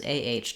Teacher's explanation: think of that open ah with no rounding